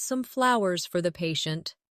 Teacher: stress flowers to show the gesture.